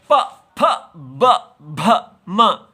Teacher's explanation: प फ ब भ म और उपद्मानिया फ दोनों होठों से इसका स्वर आता है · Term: ओष्ठ